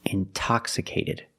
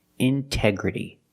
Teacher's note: We have the stress after the NT. We pronounce the T like a pure T. T. Release the sound.